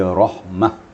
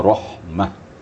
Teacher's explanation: Di ta marbutah ini, walaupun dia baris 2 di atas, kalau kita berwakaf, maka dikembalikan bunyi kepada ha. Karena tempat bertengger ta itu adalah ha.